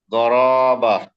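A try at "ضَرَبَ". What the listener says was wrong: মাশাআল্লাহ, আপনার সব ঠিক আছে, শুধু উচ্চারণে একটু এখানে টান হয়ে গেছে, প্রত্যেকটা জেরে একটু টান হয়েছে, এখানে জেরে টান হয়েছে, এখানেও জেনে, এখানেও জেরে।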